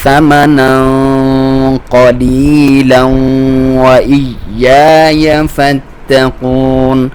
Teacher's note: اخفا کریں گے تو اس کی آواز تھوڑی سی موٹی ہوگی کیونکہ آگے حروف مستعلیہ میں سے قاف آ رہا ہے تو اس کا ساؤنڈ ویسے بھی موٹا ہوتا ہے.